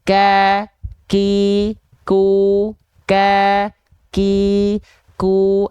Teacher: vokal a i u karena dia dalam kondisi sukun gitu jadi dalam kondisi berharakat pun Kaf itu ada ka ki ku ka ki ku ada percikan nafasnya